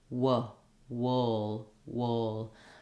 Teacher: I'm going to start with my lips more pursed to make the W and then I'm just going to open to the uh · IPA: wʊ